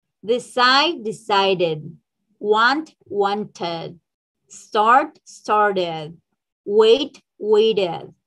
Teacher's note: We pronounce like ed. Se puede decir que se agrega como una sílaba más. After d or t sounds. Después de sonido de D o de T, va a sonar así.